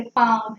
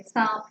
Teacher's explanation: अनुनासिका बोलते समय नाक और मुंह का इस्तेमाल हो रहा है